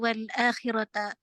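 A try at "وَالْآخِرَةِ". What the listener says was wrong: Surat dunya wal akhirati. Surat dunya wal akhirati, bukan akhirata.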